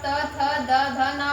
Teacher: ये दंत से, जब आप त थ द ध ना बोलेंगे तो आपकी जीभ बार बार दांतों से टकराएगी